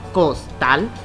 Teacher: nos damos cuenta que la sílaba tónica se encuentra en la última sílaba. Y aunque es aguda, su terminación es en L, lo que la hace que la palabra no lleve tilde o acento ortográfico.